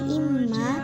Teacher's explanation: Alasannya karena terdapat huruf mim bertasydid. Cara membacanya dibaca dengung pada mim bertasydid dan ditahan selama 2 harokat. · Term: gunnah